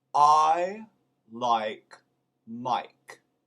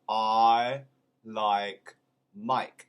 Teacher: in true british is the combination diphthong of ah and i